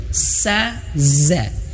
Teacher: sa za sama-sama di ujung lidah, sama-sama di vokalnya di ujung lidah, sa za. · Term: sin dan zai